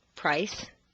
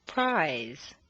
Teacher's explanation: when s becomes Z under contrast in the list that follows notice how the voiced word is drawn out